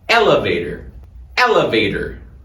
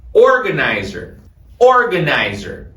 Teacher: Foca no começo da palavra joga o Word stress ali